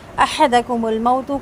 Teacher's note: احدکم الموت، کوئی بھی حرکت بالکل لمبی نہیں کرنی، نہ حضر کی نہ احد کی، اور موت میں تا کا پیش لمبا نہیں ہوگا